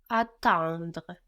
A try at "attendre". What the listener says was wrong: So emphasizing much more the en, no, and the accent does fall there as well, will help you fall into the next sound. You're concentrating on the next sound, no, the D-R-E, which is making you pronounce it too much. So concentrate much more on the en in the middle, attendre, and try to fall into the